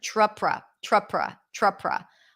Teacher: notice the TR right it's a CH sound